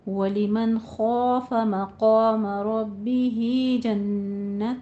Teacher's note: وَلِمَنْ نون ساکن ہے، آگے حروف حلقی میں سے ہے، اظہار حلقی ہوگا، اور خوف میں خو کو پر پڑھنا ہے، الف بھی پر ہو جائے گا۔ مقام میں بھی قوف پر الف بھی پر ہو جائے گا۔